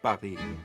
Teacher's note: try to remove that puff of air, and you'll get something closer to the French sound.